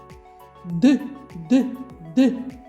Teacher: коли ми вимовляємо звук д язичок піднімається до верхніх зубів горло працює · горло наше працює коли ми його промовляємо так значить звук у нас дзвінкий